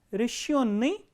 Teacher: the stress is on yo the second syllable